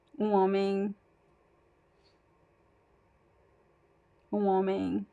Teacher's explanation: Since we don't pronounce the M at the end of words, we do not make a connection here, so it sounds homem. There is no N and there's no M sound in the word I know it's hard for English speakers to understand.